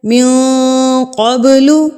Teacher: من قبل، قوف، ابھی میں نے بتایا خص ضغط قز، اس میں قوف آ گیا تو قوف کو ہم یہاں پر پر پڑھیں گے، یعنی کہ موٹا کر کے پڑھیں گے